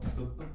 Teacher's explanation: 입술에서 터지죠? 그래서 뿌뿌뿌 계열이 여기서 나요